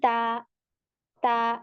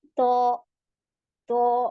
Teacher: ता ता जबान पीछे से स्ट्रेट हो गई और त में पीछे से उठ गई है